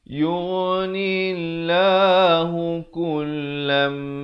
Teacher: Asalnya kullan, tapi bila datang mim terus masuk beserta dengung dua harakat. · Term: idgham bi gunnah